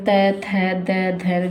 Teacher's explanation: दंतस्य जो दांतों की सहायता से उच्चारित की जाती है। जैसे दंतस्य जैसे कि ल त वर्ग, त, थ, द, धन जिसमें हमारे जो दांत है, जीभ को टच करती है।